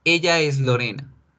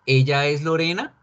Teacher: Sencillamente le pongo los símbolos de pregunta y subo el tono de mi voz al final. · Si ven que cuando nosotros hacemos las preguntas inconscientemente subimos la voz, eso representa duda, eso representa interrogación.